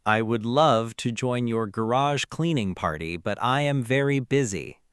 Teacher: with a completely flat, monotone voice, it sounds incredibly sarcastic and mean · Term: monotone refusal